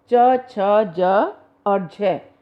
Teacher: आप देखो जीभ जो है हमारे ऊपर तालू से पहले तो संघर्ष कर टकराती है, पहले जीभ जो है ऊपर तालू से टकराती है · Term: स्पर्श संघर्षी व्यंजन